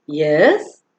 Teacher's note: when somebody says excuse me the response that is expected is yes with a rising tone